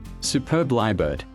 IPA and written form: suːˈpɜːb ˈlaɪə.bɜːd (Superb lyrebird)